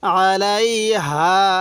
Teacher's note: হা থাকলে সেই হাঁটি উচ্চারণের সময় মুখ দিয়ে হালকা বাতাস বের করব